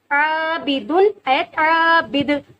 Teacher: آیت کے بعد دال جب ساکن ہو جائے گا تو یہاں ہم قلقلہ کریں گے